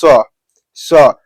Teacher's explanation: स बोलने पर में ह का मात्रा जो है कि थोड़ा बहुत आ रहा है थोड़ा बहुत ह सुनाई दे रहा है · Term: ऊष्म व्यंजन